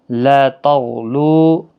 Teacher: لا الف مدہ ہے، غین حرف مستعلیہ ہے، خیال رکھنا اس پر قلقلہ نہیں ہونا چاہیے۔ لا تغلو، لو واو مدہ ہے، 1 الف کی مقدار کے برابر کھینچ کر پڑھیں گے۔